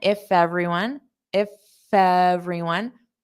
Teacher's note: I might hear a little bit of that f sound on everyone.